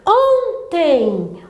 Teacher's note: a sílaba tônica de ontem é o ON. Eu vou acentuar terminada em E, com M, então não posso acentuar.